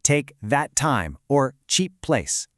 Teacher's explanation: Notice how you don't actually say the T or the P twice. You just say it once and the two words share it.